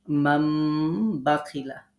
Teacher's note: ইকলাব মানে নুনের জায়গায় মিম পড়া